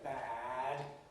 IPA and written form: bæd (bad)